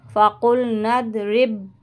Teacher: तशदीद है बा के साथ, इसलिए यहाँ पे जमाव करेंगे